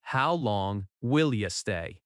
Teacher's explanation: The stress falls on long and stay. · In natural speech, will you often links and sounds like will ya?